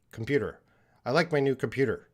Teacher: The T sometimes makes a D sound